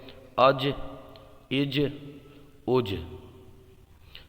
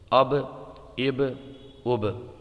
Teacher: تو یہاں پر آپ کی آواز جو ہے نا پلٹنی چاہیے، پلٹ کر کے واپس آنی چاہیے۔ یہاں پر قلقلہ ہوگا، یہاں پر قلقلہ ہوگا، یہاں پر بھی قلقلہ ہوگا، اب اب اب۔